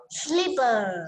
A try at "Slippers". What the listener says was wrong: Slippers. There's S.